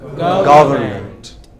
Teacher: break it into syllables government and put the stress on the first